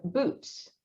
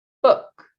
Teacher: Ooh is a little bit higher. So we're thinking about like your tongue placement. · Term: vowel height